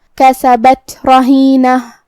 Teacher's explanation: ہم حرف الرا کو موٹی آواز میں پڑھیں گے. آخر میں تا مدورہ ہے، ہم یہ حرف پہ روکیں گے تو ہا سے روکیں گے.